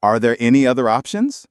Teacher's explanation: It went up at the end, which is perfect for a yes-no question.